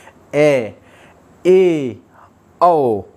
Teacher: ए औ ये होते हैं अर्धविवर्त होते हैं जब हमारा मुख आधा खुला होता है।